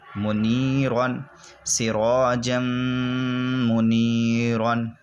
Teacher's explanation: تنوین کے بعد میم آیا میم حروف یرملون میں سے اس لیے ادغام ہوگا گنہ کے ساتھ